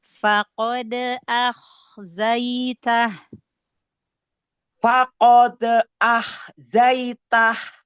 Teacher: Koknya tebalkan lagi, angkat pangkal lidahnya.